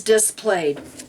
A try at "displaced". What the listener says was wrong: yeah but it's not displayed its displaced